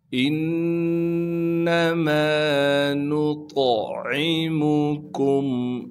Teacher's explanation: عین کو صاف کر کے گلے سے ادا کریں گے۔ میم کو بغیر کھینچے پڑھیں گے۔ · نون کو طا سے ملائیں گے اس لیے کہ طا ساکن ہے اور طا موٹے حروف میں سے ہے، لہٰذا طا کو موٹا کر کے پڑھیں گے، اور طا حروف قلقلہ میں سے ہے، لہٰذا طا پر قلقلہ کیا جائے گا۔ عین کو صاف کر کے گلے سے ادا کریں گے۔